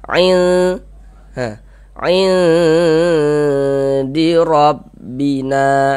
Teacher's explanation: suaranya kita tahan kita panjangkan saja sepanjang dua harakat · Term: ikhfa hakiki